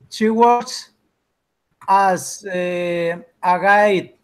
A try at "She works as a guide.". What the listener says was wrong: No Spanish. As is okay. Very good.